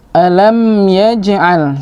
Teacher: huruf mim sukun atau mim mati bertemu dengan ya, masuk pada hukum tajwid izhar syafawi, jelas pada bibir. Alam yaj, pada jim, ya, jim ini termasuk qalqalah surah.